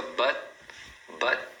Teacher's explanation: eles seguram o T no final